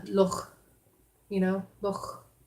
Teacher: like their native Scottish words, like they'll retain the velar fricatives